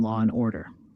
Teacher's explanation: Intrusion adds a sound between words like adding an R in law and order